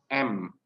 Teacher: Ketika kita memproduksi huruf M, itu bunyinya dari hidung, nasal, M.